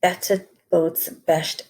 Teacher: we have the repetition of very harsh plosive sounds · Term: plosive alliteration